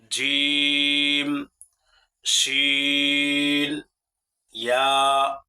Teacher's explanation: জিহ্বার মধ্যখান তার বরাবর উপরে তালুর সঙ্গে লাগাইয়া 3টি হরফ উচ্চারিত হয়। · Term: 6 নং মাখরাজ